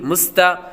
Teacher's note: یہاں پر اس کو سیٹی کے آواز والے کے ساتھ پڑھیں گے، کیونکہ سین حروف صفیریہ یعنی سیٹی والے حروف میں سے ہے۔